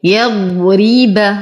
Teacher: أصبر على الضاد فيه استطالة وتفخيم. يضرب، نرقق الراء ونتم كسرتها.